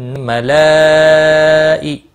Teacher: مد متصل 4 الف کے برابر کھینچ کر پڑھیں گے